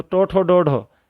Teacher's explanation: जीभ ऊपर तालू पर लग करके मुड़ती है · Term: मूर्धन्य